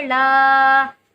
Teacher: لا کو بھی ہمیں ایک الف کی مقدار کھینچنا ہے کیونکہ کھڑی حرکات ہے